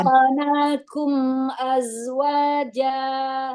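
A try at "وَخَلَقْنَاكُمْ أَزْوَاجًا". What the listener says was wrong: Iya, qafnya jangan ke. Jangan ragu-ragu qafnya ya.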